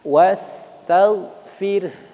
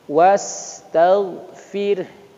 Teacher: Fir-nya tetap tipis, kemudian hadirkan huruf ha.